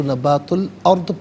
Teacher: نبات الارضی، یہاں وقف کریں گے تو نبات الارض پڑھیں گے، را ساکن ما قبل حمزہ پر زبر، را ساکن کو پر کر کے پڑھا جائے گا